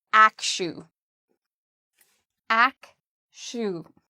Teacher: The second part, even though it's spelled with a TU, is pronounced like an SHU.